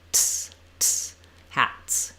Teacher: The T sound, the tongue is up high and it releases a burst of air. So we basically do the burst and then we release it right into the S.